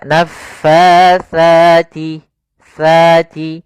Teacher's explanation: makhrajnya adalah ujung lidah kita menempel dengan gigi sari atas, dan ini sama seperti zal. Maka naffatsati, tsati. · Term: huruf sa